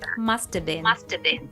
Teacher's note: The word have is reduced to a schwa sound and it links the words must and been together.